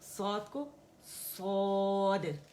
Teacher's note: صاد جو ہے موٹا لیٹر ہے، اس میں زبان پیالہ بنتی ہے